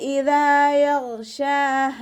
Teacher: ഗൈന് ഇസ്തിഅലാൻ്റെ ലെറ്ററും കൂടിയാണ്, തഫ്ഹീം ചെയ്തിട്ട് ഉച്ചരിക്കുക